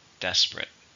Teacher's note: stressed on the first syllable · How many syllables are in desperate? 2 or 3. Stress is on the first syllable.